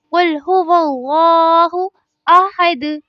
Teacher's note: اب احد کی ادائیگی میں بھی ہاں کو اس کے صحیح مخرج کے ساتھ ادا کرنا ضروری ہے، اور آخر میں دال ہے تو دال پر ہمیشہ قلقلہ ہوتا ہے، یعنی اسی طرح جھٹکا دے کر ہی پڑھا جاتا ہے